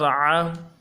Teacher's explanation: گلے کے اندر سے جماؤں کے ساتھ ادا کریں گے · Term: حروف حلقی